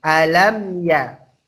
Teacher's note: Lamnya mim matinya ketemu ya. Maka juga izhar syafawi dibaca jelas di bibir.